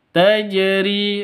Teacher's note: Ada di tengah, berarti qalqalah sugro. Tajri, ri panjang dua ketukan karena ada ya mati diawali dengan kasroh · Jimnya sukun, berarti berlaku hukum qalqalah. Ada di tengah, berarti qalqalah sugro.